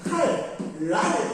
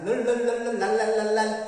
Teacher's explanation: 니은이 리을을 닮아서 리을이 되는 겁니다. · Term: 유음화